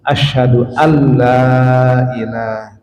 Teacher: karena nun sukun masuk lam itu adalah idgham bila huna